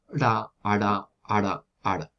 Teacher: tenemos la posibilidad de hacer una percusiva retrofleja, que sería ra, ara, ara, ara. · hacer una especie de R, pero retrofleja y recordad siempre muy rápida, porque esa es la característica de las percusivas.